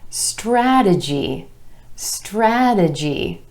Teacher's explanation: 3 syllables, emphasis on the a sound in the first syllable